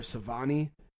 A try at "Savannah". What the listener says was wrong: Savannah. With an A. Yeah, it's with an A.